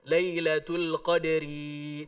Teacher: Ketika baca Lailatul Qadri di ayat ketiga, ro-nya nggak panjang